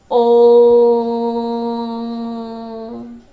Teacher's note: प्लुत स्वर को उच्चारण करने में हमें हर स्वर की अपेक्षा 3 गुना समय लगता है, यानी इससे हमें लंबा बोलना पड़ता है, ठीक है ना।